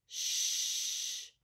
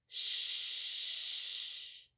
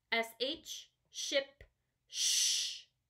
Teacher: yeah it's almost like you're telling someone to be quiet Shh your lips are flat and across but they're not exactly touching and the air is coming through your teeth